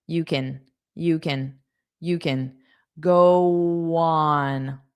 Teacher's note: It'll be an unstressed kin.